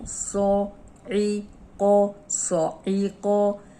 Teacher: صاد بھی موٹا ہے، عین حروف حلقی ہے اور قوف موٹا ہے، یہ بھی موٹا ہے، یہ بھی موٹا ہے، اور اس کو حلق سے نکالنا ہے۔